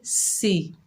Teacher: سین کے نیچے زیر بغیر کھینچے پڑھیں گے، سی، سین کو سیٹی سے ادا کریں گے